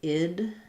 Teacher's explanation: The D doesn't really get released.